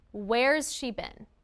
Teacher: Has can sound like z or uz after voiced sounds.